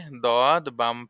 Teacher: পাশের মাড়ির দাঁতের গোড়া হতে মোটা আদায় হবে